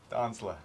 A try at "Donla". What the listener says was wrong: The S is silent. Donla.